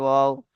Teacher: দুই ঠোঁট না মিলে মাঝখানে উচ্চারিত হয় ওয়াও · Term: ওয়াও এর মাখরাজ